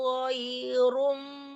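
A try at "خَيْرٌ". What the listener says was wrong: Ghai, bukan ghai ya. Bukan ghai, Bu. Itu kan hurufnya kha. Ibu, jangan ghai itu kan bukan ghain itu kha itu Bu. Jangan ghai dibaca tapi khai. Beda ghai sama khai ya.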